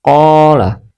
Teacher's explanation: huruf qaf yang berharakat fathah bertemu dengan alif, maka dia kita baca qa, qa, dipanjangkan dua harakat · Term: mad thabi'i